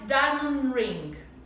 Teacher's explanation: A gente termina com o N do diamond, já emenda com o ring.